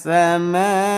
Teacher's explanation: Jadi dipanjangkan dulu, ketuk 5 kali. 1, 2, 3, 4, 5, lanjut. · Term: mad wajib